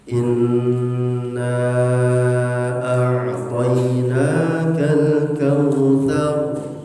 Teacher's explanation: inna itu gunnah. Jadi didengungkan. 2 harakat saja gunnah.